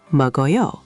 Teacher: The keo connects to a, so meogeoyo.